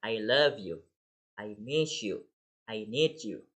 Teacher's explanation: And of course we will say I love you, I miss you. We will stress the word of love and miss.